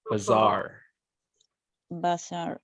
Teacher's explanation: Because you have two A's, the sound is a little bit longer.